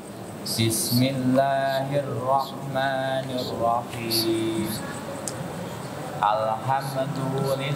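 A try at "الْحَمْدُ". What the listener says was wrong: Laisa alhamdu. Nggak ada qalqalah.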